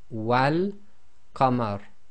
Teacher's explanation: the wa will now join to the lam in the definite article in this case, because this is one of the moon letters, and the giveaway here is the lam has got a sukoon on it, so it is going to be involved in the sound.